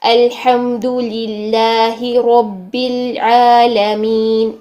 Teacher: यह बारीक होगा क्यों क्योंकि इसमें जलाला के लाम से पहले यहां पर लिलाही लाम के नीचे जेर है